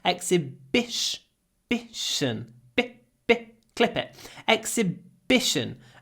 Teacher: it's a really short I because we clip vowels